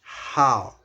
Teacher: Ni, ni has a rising tone, so it's ni. And then how has a falling rising tone, which is how